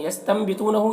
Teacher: نون ساکن کے بعد با ہے تو نون کو میم سے بدل کر پڑھیں گے، غنہ اور اخفا کے ساتھ میں، اس کو اقلاب کہتے ہیں۔